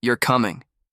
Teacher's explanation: The tone drops flat and cold.